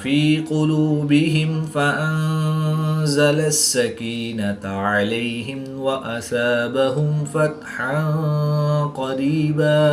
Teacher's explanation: ہا کو حلق کے نیچے والے حصہ سے ادا کر کے پڑھیں گے